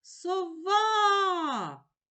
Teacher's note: сова А голосний позначаю кружечком поділимо слово на склади со ва у слові сова два склади визначимо наголос покличемо слово сова а наголошений другий склад